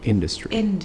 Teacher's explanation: Tapi kalau cuman industry itu kita stresnya di pertamanya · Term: syllable stress